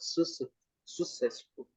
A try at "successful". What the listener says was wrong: Double C in English. Pronounce both. Successful. Successful. Tem os dois Cs. Successful. Um com som de K, outro com som de S. Successful. Successful. Não, você está dizendo sucesso. Success. Success. Successful.